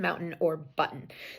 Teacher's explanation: that sound, which is a glottal stop, the one we get in button or mountain, is not used by everyone